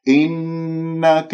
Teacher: إنك هذه الكسرة لا تمطها، لا تجعلها ياء، إنك خطأ بس خلصت. إنك النون المشدد الغنة أكمل ما تكون